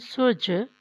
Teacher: سین پیش جیم ساکن سوج، اب جیم کلکلا ہونے کی وجہ سے، ساکن ہونے کی وجہ سے سوج بولا ہے، جب ہم ملائیں گے تو رک جائے گا.